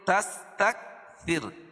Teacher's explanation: ولا تمنون تستكثر، تستكثر، وقفہ کی حالت میں را کے اوپر جو پیش ہے اس کو جزم سے بدل دیں گے اور رائے ساکنہ سے پہلے زیر آ جائے گی تو یہاں را باریک ہوگی